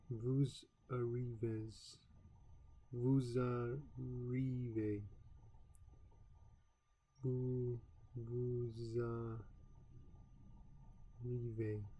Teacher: Its final S, pronounced Z, is linked to the beginning of the next word, arrivas. The pronunciation of this word is now zarive, and the necessary liaison has been painlessly achieved.